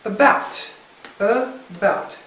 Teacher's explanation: two syllables stressed on the second